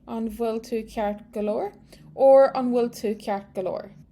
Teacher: this BH is pronounced like a V in Munster and like a W elsewhere